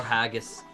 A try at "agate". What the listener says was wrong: It's Agus. You gotta drop the H a little bit.